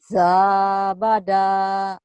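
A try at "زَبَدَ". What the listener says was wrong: Za bukan. Za diulang dari awal.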